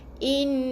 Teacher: Sebab nun yang bersabdu kena ke hidung. Bunyinya daripada hidung, daripada rongga hidung. Jadi kena dengung 2 harakat, tahan nafas 2 harakat, baru sebut huruf yang berbaris atas ni.